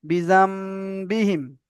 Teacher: নুন সাকিনের পরে বা এসেছে, তাই নুন সাকিনকে মিমের দ্বারা পরিবর্তন করে একালি পরিমাণ গুণনা করে পড়তে হবে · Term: ইখলাব